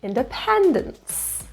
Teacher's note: stress is in the third syllable